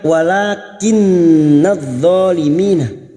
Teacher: Wala, alif kecil di atas adalah dua harakat yang kita panjangkan.